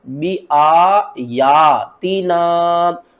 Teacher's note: جتنا ہم نے آ کو کھینچنا ہے اتنا ہی ہم نے یا کو کھینچنا ہے، ان دونوں کی جو کھینچنے کی مقدار ہے نا وہ سیم ہوگی۔